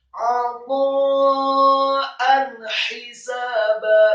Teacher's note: hamzah dengan harokat fathah tanwin bertemu dengan huruf ha, hukum bacanya adalah idhar halqi, dibaca jelas